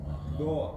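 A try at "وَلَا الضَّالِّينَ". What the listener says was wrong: Jangan jangan do nggak usah terlalu o Pak. Jadi antara a dan o tengah-tengah. Do aksennya itu jangan terlalu o.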